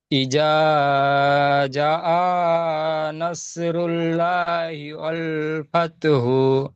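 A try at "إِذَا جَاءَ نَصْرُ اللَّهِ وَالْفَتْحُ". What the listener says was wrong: এটা লা এটা লা বলছে, ল হবে।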